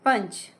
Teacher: अब यहां पंच में न का प्रोनाउंसिएशन आया है। जब पंच में अनुस्वार लगा तो उसे हमने न प्रोनाउंस किया।